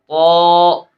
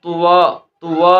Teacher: طا کو جب ہم نے پڑھنا ہے ہونٹ گول نہیں ہونے چاہیے، کیونکہ حروف مستعلیہ میں سے ہے تو حروف مستعلیہ پر ہونٹ نہیں گول کیے جاتے، ٹھیک ہے۔